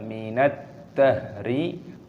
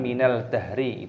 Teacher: Hinum minad dahri, alif lam samsiyah, dalnya berharokat tasdid, kita masukkan, kita idghamkan, dibaca minad dahri, bukan minal dahri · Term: idgham samsiyah